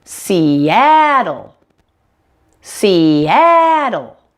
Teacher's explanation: has 3 syllables and the middle syllable that ah is the primary stress syllable · make sure the a sound is much louder and longer than the other two syllables around it · since this is an L that's not found in most languages the final L is what we call a dark L